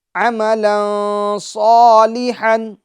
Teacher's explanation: الف مدہ ہوگا تو اس کو ایک الف کی مقدار ہم کھینچ کے پڑھیں گے